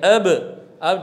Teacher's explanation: جیسے آواز رکی شفتین پر تو با کا مخرج معلوم ہو گیا کہ یہ شفتین ہے